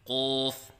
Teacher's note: بعض بچے قاف کو پر کرتے وقت ہونٹوں کو گول کرتے ہیں، یہ غلط ہے